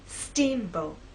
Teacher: Now, when you say the word, I want you to think about making the first part at a higher pitch. So our voice will be higher at the beginning and lower in the second part.